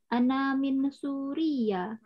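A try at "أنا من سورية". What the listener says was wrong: Gak ada tasdid di situ.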